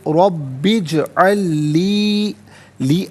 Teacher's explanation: और इजअल में आप देखें लाम साकिन, फिर इसके बाद लाम आ रहा है तो लाम साकिन को लाम के साथ मिलाएंगे, लाम की आवाज़ को ही अदा किया जाएगा